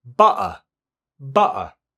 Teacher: the T might just drop out altogether. So it's replaced by a brief pause, which is known as a glottal stop.